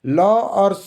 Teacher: ल और स का उच्चारण स्थान कहां से होता है? दंत से होता है।